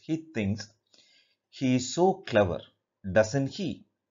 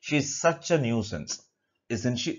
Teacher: tag questions will take falling intonation